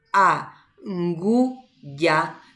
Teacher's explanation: se van a dar cuenta de que ngu es una sílaba nasal, que el sonido de la U sale por la nariz